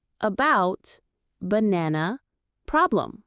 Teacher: Schwah is relaxed and short.